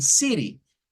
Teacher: O a veces utilizan una especie como de R, una R suave y dicen city.